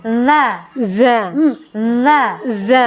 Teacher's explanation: Kalau yang temannya da itu za, lidah keluar